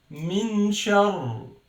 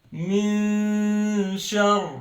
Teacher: There is noon, but it's hidden noon, not min clear one. It's min shar and غنة for 2 beats. · The last rule is إخفاء حقيقي, and in Arabic إخفاء is to hide it. It's only hiding the noon and do غنة for 2 beats.